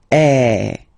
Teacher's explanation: So it's really open. I mean, the sound is really open, and normally your mouth should be opened a little bit more than with the accent aigu as well. Okay, so it goes like eh. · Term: accent grave